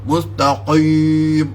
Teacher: Orang yang mengaji mustaqim, dia agak nipis sikit daripada mustaqam.